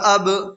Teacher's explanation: جب ان پر جزم ہو تو ان کو پڑھتے وقت ان کے مخرج ٹکر کھا کر الگ ہو جاتے ہیں۔ · با میں آواز ٹکرا رہی ہے، اسی کو قلقلہ کہتے ہیں